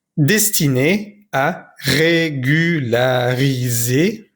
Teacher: no pronunciamos la última R